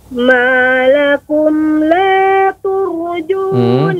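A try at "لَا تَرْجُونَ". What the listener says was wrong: Ya, tidak turju tapi tarju.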